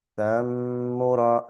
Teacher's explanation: But the Meem is being held. We hold it and we read it with a slight nasal sound. That's what Ghunna is.